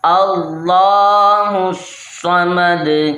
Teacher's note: نہ الف پڑھا جائے گا نہ لام پڑھا جائے گا، ڈائریکٹ ہا صاد سے مل جائے گا، اور صاد کو اچھے طریقے سے ہم نے جما کے پڑھنا ہے۔